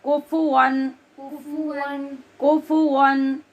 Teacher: वाव के लिए होंठ गोल करने हैं, वन यानी ऊपर के दांत नीचे के होंठ पर नहीं लगने देने।